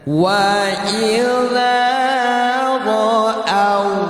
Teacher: Kalau fathah ada waw, baca au, jemput dengan bibir, jangan tanggung bibirnya.